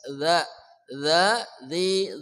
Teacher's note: Ujung lidah bersama ujung gigi di atas. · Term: dzal